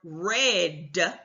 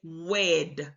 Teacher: because they're using their lips bilabial they're using their lips instead of their tongue